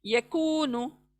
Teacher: Then next यकू, कू खींचना है, वाव मद्दा आया है, यकूनु यकूनु। काफ को पढ़ते वक्त ध्यान दें, अंदर को न जाएं, बड़ी काफ के पास मत जाएं, मुंह के अंदर से अदा करें